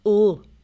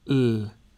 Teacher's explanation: In the north, it has a richer sound because you use the back of your tongue as well as the front.